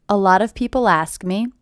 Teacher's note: this T is a flap T